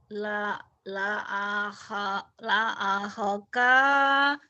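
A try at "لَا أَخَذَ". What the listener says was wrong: La akhoka. Nggak ada yang panjang. La akhoka.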